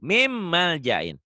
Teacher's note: Dibacanya, ini N ketemu M. Karena hukum N, hukum nun mati, min. N-nya berubah jadi M tuh. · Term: idgham